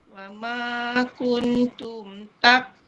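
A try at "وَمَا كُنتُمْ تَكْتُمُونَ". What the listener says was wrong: Okay, mim tu jangan panjang sangat. Wa ma kun. Sekali tekan je.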